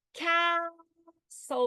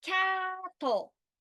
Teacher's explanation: So the consonant-le syllable is non-accented. It does not have pitch on it.